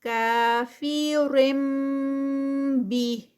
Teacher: کافرم بی، یہاں پر تنوین تھی تو آگے اس کے بعد با ہے تو یہاں پر رول اپلائی ہو رہا ہے اقلاب کا، اس کو میم نون کی آواز کو ہم نہیں پڑھیں گے بلکہ ڈائریکٹ اس کو اقلاب میں میم کی ساؤنڈ آتی ہوتی ہے